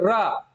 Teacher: रा लुंठित है, और जब बोलिए रा तो कांपती भी है जिह्वा ना वहीं पर, तो इसीलिए प्रकंपित भी कहते हैं, और लुंठित मतलब जिह्वा जो है वो रोल करते हुए, रा मतलब कि जैसे लुढ़कती है, इसीलिए इसे लुंठित भी कहा गया है, ठीक है।